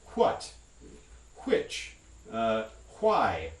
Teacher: an optional variant that's a voiceless wa